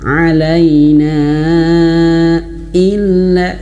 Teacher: Wa ma alaina illa, nah di sini ada hamzah ya, hamzah tidak boleh kita seret-seret, nggak boleh bacanya alaina illa, tidak. Hamzah harus jelas, tahqiq, jahar, terputusnya nafas.